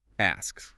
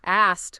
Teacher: It's physically easier to just keep it turned off for the ending. So the ED comes out as an unvoiced T sound.